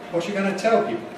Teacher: you must put the nucleus on tell